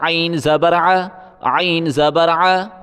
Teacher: گلے سے زور لگا کے عین نکالیں